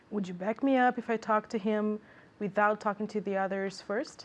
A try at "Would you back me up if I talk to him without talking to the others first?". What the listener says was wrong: Okay, now did you hear intonation? Because I didn't hear intonation. One more time.